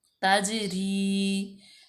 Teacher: जीम हरूफ कलकला में से है, तो यहाँ पे कलकला किया जाएगा